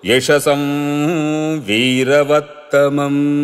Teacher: యశసం అది అనుస్వారం కనుక అది వకారం పరంగా ఉంది కాబట్టి అనునాసిక వకారం వస్తుంది